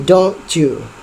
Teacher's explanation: Ada assimilation, ada peleburan kata T ke Y. Y, TY, T ke Y.